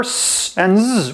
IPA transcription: s and z